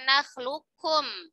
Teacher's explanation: Bertemunya huruf qaf dengan huruf kaf. Qaf dan kaf ini makhrajnya berdekatan, ya. Dan sebagian sifatnya berbeda. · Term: idgham mutaqariban shaghir